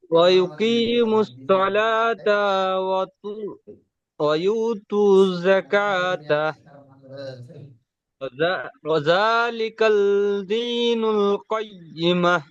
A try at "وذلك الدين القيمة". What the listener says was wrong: দেখেন ওয়াজালিকাল নয়, ওয়াজালিকা। কাল যদি বল, আপনি কাল বলছেন, যদি কাল হয় তাহলে কাফের পরে লাম হবে, তাই হ্যাঁ, ওয়াজালিকা।